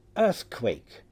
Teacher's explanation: The second vowel must be a diphthong with a high vowel offset, such as E, and an onset similar to our first vowel, so A is a likely candidate.